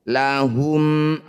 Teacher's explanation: selain mim dan ba ini disebut bacaan izhar syafawi cara bacanya bunyi mim sukun baca jelas rapatkan bibir tidak usah dengung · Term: idhar syafawi